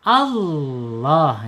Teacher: lam jalalah itu ucapannya dengan Allah gitu. Allah lam justru ditebalkan dia. Allah tebal. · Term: Tafhim tebal